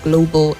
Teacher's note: The AL on the last syllable doesn't sound ah. The A there doesn't sound ah. It's a weak sound